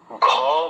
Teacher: ঘ মহাপ্রাণ এবং ছ মহাপ্রাণ